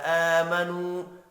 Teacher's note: حمزہ کھڑی زبر کی وجہ سے اور نو واو مدہ کی وجہ سے ایک ایک الف کے برابر کھینچ کر پڑھیں گے۔